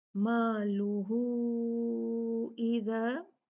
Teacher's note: मालूहू इज़ा मद सिला कुबरा 4 काउंट, यहाँ हु को 4 काउंट खींचा जाएगा क्योंकि ये मद है। मद मद सिला सुगरा sorry कुबरा due to हमजा, क्योंकि हु मद बनी उसके बाद हमजा आ गया तो ये हु को अब हम 4 काउंट खींचेंगे।